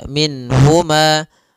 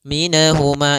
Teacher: ditahan suaranya minhuma enggak boleh juga Maka langsung saja minhuma dan dia tidak boleh mantul nunnya tidak boleh minahuma minahuma ini juga sama tapi dia sempurnakan makhraj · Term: izhar